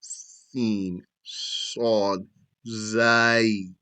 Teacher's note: The whistling letters are also from there, the edge of the tongue, while being above the lower front teeth.